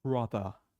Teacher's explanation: On the other hand, R in British English is brother. So R is silent. It's dropped. We are not saying it.